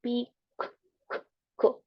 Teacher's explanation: si ponen su mano en su garganta y luego dicen pi, la C no va a producir una vibración en las vocales.